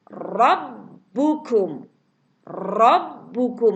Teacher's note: Ya, ini ra tafkhim, dibaca tebal.